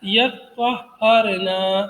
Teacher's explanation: یتطہرنا تھا تو تا کو طا میں مدغم کر دیا تو ہو گیا یطہرنا، یعنی دوسری قرأت کے حساب سے.